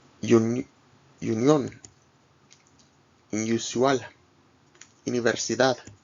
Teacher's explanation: U is like the U in the name Lulu, but shorter.